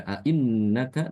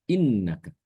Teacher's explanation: bacaan Ibnu Katsir dia dengan menghilangkan Hamzah pertama jadi bacanya Yang yang tadinya dibaca a innaka dibacanya innaka Ya